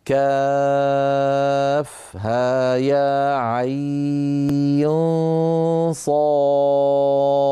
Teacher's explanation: حرف عين ينطق على ثلاثه احرف اوسطها حرف لين ويمد بمقدار اربع او ست حركات من طريق الشاطبيه ويلحق بمد اللين وذلك في كاف ها يا